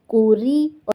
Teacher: را زیر ری، ری باریک پڑھیں گے، ری نہیں پڑھیں گے، ری باریک کر کے.